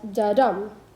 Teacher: unstressed syllable followed by a stressed syllable which we can denote as da dum as in weak strong